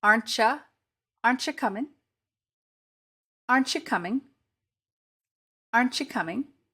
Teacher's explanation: In all of these examples, we aren't saying the t sound. It's transformed into a ch sound.